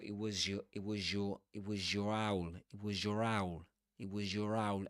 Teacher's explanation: The z and the y are too close. In connected speech, you'll hear when they combine, you get this zh consonant.